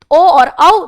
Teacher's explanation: तो ए आई कंठ तालु ओ और औ ओ कैसे बनता है अ प्लस उ से तो अ का उच्चारण स्थान कंठ उ का ओष्ठ तो कंठ ओष्ठ ओ और औ दोनों का उच्चारण स्थान कंठ ओष्ठ